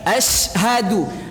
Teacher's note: Jadi makhrajnya wasatul lisan, di tengah-tengah lidah. Di tengah-tengah lidah, baca betul-betul dari tengah lidah.